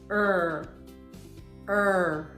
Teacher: And the sound of the letter R is er. The sound is voiced. Your vocal cords vibrate, and the sound is created in the back of your throat with your tongue curled backward.